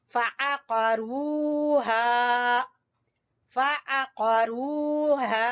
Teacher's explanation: फ़अ वस्ते हलक से आ और कौफ, कौफ को मोटा पढ़ना है, जबान की जड़ से अदा करना है, और रा को भी पुर पढ़ना है, इसलिए दोनों कौफ और रा ग्रीन है।